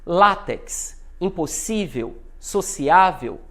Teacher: o lá o si e o a são os mais fortes na penúltima sílaba · Paroxítonas. Sílaba tônica é a penúltima.